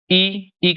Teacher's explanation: ई का उच्चारण स्थान तालु है